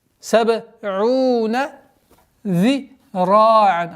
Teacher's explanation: Применение правила калькаля, после которой долгота в размере 2 огласовок, огласовки дамма над звуком айн.